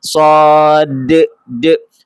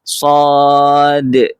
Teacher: So kalau kita dah baca sad kita akan bunyi e itu dah masuk pada makhraj huruf hamzah. So pastikan ada panjang enam harakat dan pada huruf dal dia mesti ada sifat qalqalah